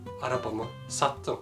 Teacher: The suffix turned to t due to both consonant and vowel harmony.